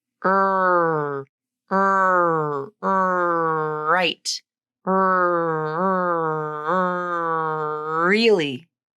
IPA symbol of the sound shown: ɹ